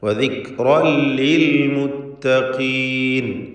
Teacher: വദിക്റൻ എന്നതിലെ തൻവീനിന് ശേഷമുള്ള ലാമിൽ പൂർണ്ണമായും ലയിപ്പിച്ച് മണിക്കാതെ ഉച്ചരിക്കുക. ഇദ്ഗാം ബിഗൈരി ഗുന്ന.